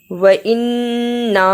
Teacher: وإنا نون مشدد ادا کیا، چھوٹی مد کو بھی ادا کیا.